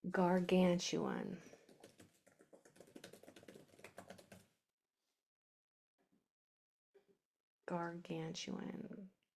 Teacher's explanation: it's a 4-syllable word, so that third syllable from the end is going to be accented. That's going to be said stronger.